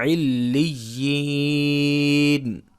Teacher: یا ساکن سے پہلے زیر آ رہی ہے، لہٰذا یہاں پہ مدہ ہوگا، یعنی کہ ایک الف کے برابر اس کو کھینچ کے پڑھیں گے